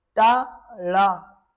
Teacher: जब आप टा और ड़ा का आप उच्चारण करेंगे तो यह आपकी जीभ आपके मूर्धा से स्पर्श हो रही है